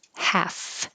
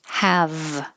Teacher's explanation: The F and the V are made in the exact same place, top teeth on bottom lip with airflow. The only difference is voicing.